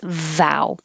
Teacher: Top teeth on bottom lip, and then use voicing. And hold your bottom lip with some pressure so that it creates the friction. That's what creates the noise.